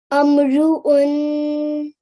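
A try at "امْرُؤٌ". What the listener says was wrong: Again, make sure that the alif is read correctly. There is a kasra, not a fatha. Try again.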